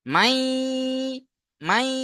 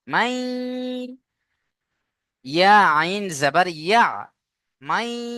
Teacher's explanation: মিম ইয়া জাবার মাই পড়তে হবে, আওয়াজটা নাকে তুলতে হবে এখানে। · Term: গুণনা